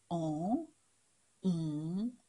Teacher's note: the nasal sounds, for which you have to push the air up through your nose to make en, un.